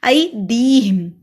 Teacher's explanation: ای کو لمبا نہیں کرنا لیکن دی کو کرنا ہے